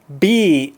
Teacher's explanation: together and pop like that and when you have them together when you're about to start saying be your upper lip the middle of it touches the bottom lip